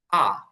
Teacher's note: ব্রিটিশরা এই আর এর ক্ষেত্রে রটা উচ্চারণ করে না, ওরা বলে আ। আ, আর না বলে ওরা বলে।